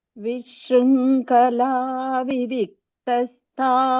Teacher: Just for Vishrunkhala, kha mahaprana, little more stress.